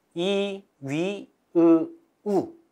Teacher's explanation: 혀가 자, 입을 거의 벌리지 않는 상태에서 이 상태가 되면 혀가 거의 입천장에 가깝게 붙어 있는데 이 위치가 가장 높은 위치. 그래서 고모음이라고 합니다.